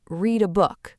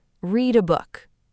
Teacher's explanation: Link the D in read to the A. It becomes read a book.